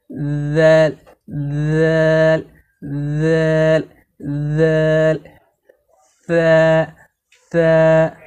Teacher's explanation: জিহুবার আগা এবং সামনের উপরের দুই দাঁতের আগা মিলিয়ে নরম করে পড়তে হয় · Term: জাল এবং ছাকে